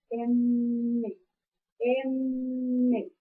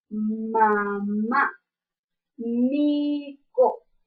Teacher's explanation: con los dos eh labios tanto el inferior como el Superior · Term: fonema m